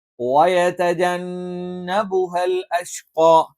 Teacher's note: ഖാഫ് എന്ന് പറയുമ്പോൾ നാവിന്റെ ആരംഭം ഈ പറയുന്ന അണ്ണാക്കിന്റെ മൃദുലമായ ഭാഗത്ത് വെച്ചുകൊണ്ടാണ് നമ്മൾ ഉച്ചരിക്കുന്നത്.